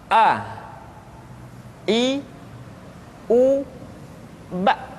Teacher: Makhraj ketika mengucapkan huruf A berada pada tenggorokan yang terjauh.